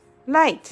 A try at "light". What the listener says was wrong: Not right. We say light.